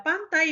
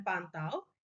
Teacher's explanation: Nah, di sini yang sama-sama dalam lingkungan fonologis yang sama, yaitu dalam posisi final, ini ada diftong I dan ada diftong AU. Kita tahu bahwa pantai dan pantau itu maknanya berbeda dalam bahasa Indonesia ya.